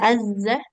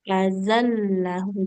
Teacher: Tidak azzah, tapi azallahum. Jadi zalnya nggak boleh kita tekan, karena di situ tidak ada tasydidnya.